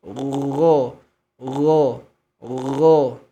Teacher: Gho punya sifat rokhawah. Mengalirnya bunyi huruf.